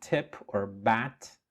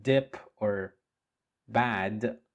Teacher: as in tip or bat and as in dip or bad they are both produced in the same place which is the alveolar Ridge